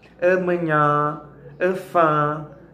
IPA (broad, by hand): ɐ.mɐ.ˈɲã ɐ.ˈfã